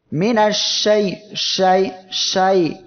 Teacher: এই হরফটি তার মাখরাজ থেকে উচ্চারণের সময় মুখের ভিতর শাসা আওয়াজ ছড়িয়ে পড়বে। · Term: তাফাশি